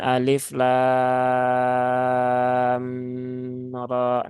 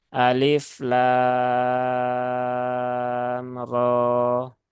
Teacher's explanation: bukan ee mutsaqal ya tapi ini mukhafaf maka cukup dibaca ringan panjangkan enam harakat kemudian langsung berpindah ke huruf ro yang dia panjangnya dua harakat · perpindahan antara lam menuju ro, nah, itu tidak ada gunnahnya ya. Nah, tidak ada dengungnya, maka tidak perlu ditahan terlalu lama.